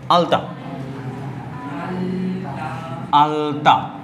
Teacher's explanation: এইখানে দন্ত স্টাইলে উচ্চারণ হলো, দন্তমূল, দন্ত মূল নয়, দন্ত ধ্বনি